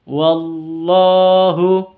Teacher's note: Kalau sebelumnya huruf lafdul jalalah, kata lafdul jalalah berharokat fathah, maka lam lafdul jalalahnya dibaca Allah, bukan dibaca la. Wallahu, di sini panjang lafdul jalalahnya karena ada fathah berdiri.